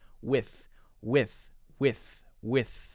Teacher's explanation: before the th my tongue is between my teeth